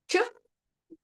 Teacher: ಚ ಅಂದ್ರೆ ಅಂಗುಳದ ಮಧ್ಯಭಾಗಕ್ಕೆ ಹೋಗಿ ತಾಗುತ್ತೆ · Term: ತಾಲವ್ಯ